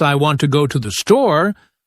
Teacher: the words want, go, and store are stressed because they carry the main meaning